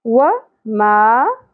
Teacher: واو کی زبر زیادہ نہیں کھینچی جائے گی، جبکہ میم کی زبر کے ساتھ الف حرف مدہ ہے، ایک الف کے برابر کھینچنا ہے